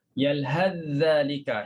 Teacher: Hilang terus huruf sa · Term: idgham